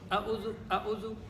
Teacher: اب واو ساکن سے پہلے پیش آ رہی ہے اور واو مدہ کو ایک الف کی مقدار اگر ٹائم سے کیلکولیٹ کریں تو تقریباً 1 سیکنڈ تک اسے ہم کھینچ کر پڑھیں گے